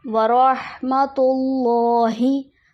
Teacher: अल्लाह के नाम से पहले पेश है, इसलिए अल्लाह का नाम मोटा पढ़ेंगे